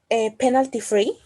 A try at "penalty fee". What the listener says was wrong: No, it's free. It's fee. Penalty fee.